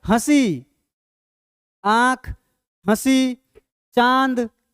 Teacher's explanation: अनुनासिक का उच्चारण नाक और मुंह दोनों से होता है।